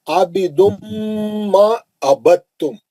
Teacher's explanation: آپ دال نہیں پڑھیں گے اس میں، دال ساکن کا تام میں ادغام متجانسین ہو رہا